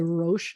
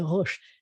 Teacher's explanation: try to make an R sound from all the way in the back of your throat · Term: French R